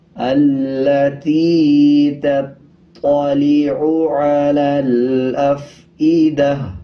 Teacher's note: آگے آخر میں دیکھیں گول تا ہے، جب وقف کریں گے تو تا کو ہا میں تبدیل کر دیں گے اور تا کے نیچے جو زیر ہے اس کو سائلنٹ کر دیں گے۔ وقف کرتے ہوئے ہا پڑھیں گے اور آدھے ہا کی آواز نکالیں گے